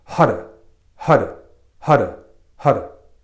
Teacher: you want to take the tip of your tongue and let it flick on the top of your palate so it's gonna sound like HUD it'll sound more like HUD